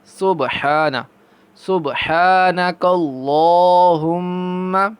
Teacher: با پر قلقلہ کریں گے